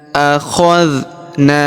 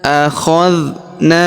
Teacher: Akna huruf na kita panjangkan dua harakat karena terdapat alif di depannya.